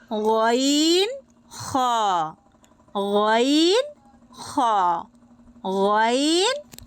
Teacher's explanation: হালক বা কণ্ঠনালীর শেষ ভাগ থেকে উচ্চারিত হবে